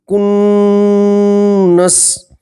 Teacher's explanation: نون میں گننا کریں گے اور نون کو 2 مرتبہ پڑھیں گے تو نون کی آواز کو آپ ناک کے اندر 2 سیکنڈ کے لیے روک کے رکھیں گے